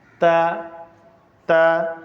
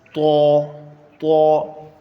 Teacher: تا تو آواز ایک جیسی ہے، بس ایک کو باریک پڑھنا ہے دوسرے کو موٹا پڑھنا ہے